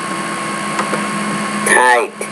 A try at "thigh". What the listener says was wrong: No, it's not tie, it's thigh. You got to get the tongue between the teeth. Thigh, thy.